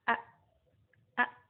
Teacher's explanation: menggetarkan pita suara sama dengan huruf H ya Nah perbedaannya yaitu ketika huruf hamzah disukun pita suara menutup jadi langsung dia Suaranya macet langsung tidak keluar suara contohnya a-a-a-a sesuai Kuswara berbeda dengan huruf H ketika disukun dia